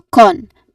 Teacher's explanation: It starts with the letter C sound or one of the letter C sound, the version with K sound and then it ends with a nasal sound which is the N sound